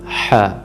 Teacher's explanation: حروف حلقی جو حلق کے وسط سے ادا ہوتا ہے